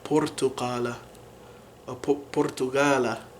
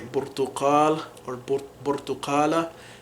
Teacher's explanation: this would just correspond to the ba sound in modern standard Arabic usually. So they're both bilabials. They're very similar sounds already. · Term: P sound